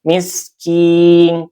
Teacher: sin ini bersifat shofir ya dan dia juga hames · Sin ini bersifat sofir ya dan dia juga hamas. Artinya keluar apa namanya nafas ya dan suaranya seperti mendesis. Miskin. Kin ini mad aridlis sukun.